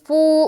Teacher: فو واو مدہ، ایک الف کھینچیں گے